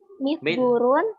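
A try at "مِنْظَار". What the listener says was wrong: Min, nunnya kemana itu?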